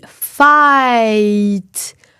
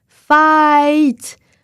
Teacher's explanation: on commence presque avec « A » et on finit presque avec « I » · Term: diphtongues